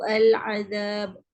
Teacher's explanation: kesalahan khafi ini iaitu dibaca tanpa mad yang mencukupi pada huruf waw. Biasa kita kadang-kadang kita baca su'al adab.